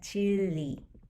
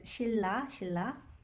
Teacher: when ryul and niun come together, the niun sound is usually replaced by the ryul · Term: assimilation